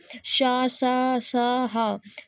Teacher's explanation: इनके उच्चारण में रगड़ से मुख में गर्म हवा पैदा होती है। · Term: ऊष्म व्यंजन